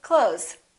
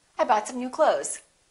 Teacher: same thing with the word clothes we don't really say clothes you might hear a tiny th with some people's pronunciation but most people just say clothes i bought some new clothes all right silent p don't say